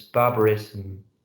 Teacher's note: a schwa vowel, little schwa vowel. I mean, a sound between the two consonants.